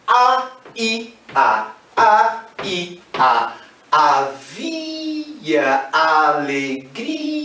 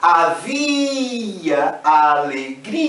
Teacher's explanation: essa repetição A, I, A, e especialmente esse fonema I, provoca um prolongamento, quase que um total distanciamento.